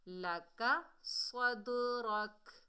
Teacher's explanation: صاد جو ہے حروف استعلا میں سے ہے، موٹا ادا ہوگا